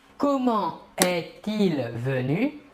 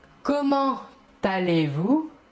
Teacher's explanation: comment termine par la consonne T et le verbe commence par un E, mais nous ne réaliserons pas la liaison. Une petite exception, sauf comment allez-vous?